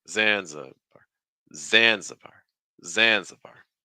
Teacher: The stress is on Zan, so that means you're taking 3 steps down.